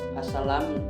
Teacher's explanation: bunyi L pada al mempengaruhi bunyi S pada salam, sehingga menghasilkan as-salam. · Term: asimilasi regresif